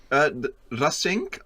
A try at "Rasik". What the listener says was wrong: Rasik. There's no N in it.